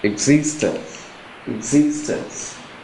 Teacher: the stress is also on the second syllable